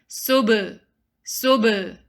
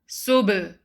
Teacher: The second letter ba, you have to bounce it. Sub. It's not sub.